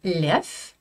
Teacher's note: Je ne prononce pas de V à la fin d'un mot russe.